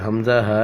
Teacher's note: حمزہ ہا، یہ حلق کے آخری حصے سے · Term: حروف حلقی